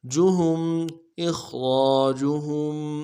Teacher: हा को मीम साकिन के साथ मिलाना है, मीम साकिन में गुन्ना करेंगे